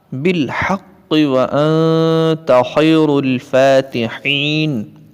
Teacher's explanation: خا کو پر کر کے پڑھیں گے اور را کو پر کر کے پڑھیں گے فاتحین، اور حالت وقف میں نون ساکن ہو جائے گی.